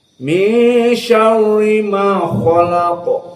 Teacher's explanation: belum belajar qiraah khalaq maka ko dalam keadaan tafkhim k khalaqo qof dalam keadaan tafhim juga maka dibaca dalam keadaan mufakhamah · Lamnya biasa tapi kha dan qaf dalam keadaan tafkhim.